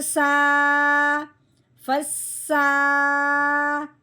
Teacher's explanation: فا سین زبر فس، سین کے اوپر کھڑی زبر ہے، اس سین کو ہم نے کھڑی زبر کے ساتھ پڑھتے ہوئے ایک الف کے برابر لمبا کرنا ہے۔ سین کھڑی زبر سا، فسا، با کے نیچے زیر ہے، با زیر بی، فسابی، قوف کے اوپر کھڑی زبر ہے، اس کو ایک الف کے برابر لمبا کریں گے۔